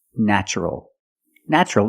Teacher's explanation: the first syllable is pronounced with a short a like black cat